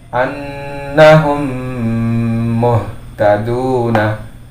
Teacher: Ya, jadi di mim ini, dan seperti biasa ketika pada mim sukun dan bacaan idgham ataupun ikhfa, semua selalu dirunahkan atau didengungkan, ditahan 2 sampai 3 harokat